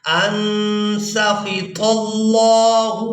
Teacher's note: یہاں پر لفظ اللہ کے لام کو پورا ادا کیا جائے گا کیونکہ اس سے پہلے والے حرف پر زبر ہے